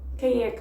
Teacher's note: Quem ends with an M, but it's actually a nasal E there. So, quem é que, but there's still a flow to it.